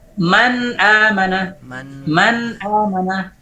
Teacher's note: Man maujud, al-juz'ul lisani maujud. Nun lengket ke makhrajnya. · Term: izhar